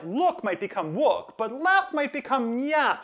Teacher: [l] has been found to shift to [w] or [j] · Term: gliding